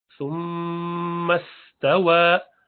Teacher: मीम मुशद्दद गुन्ना और वाव को वा बोलना है, डब्ल्यू साउंड।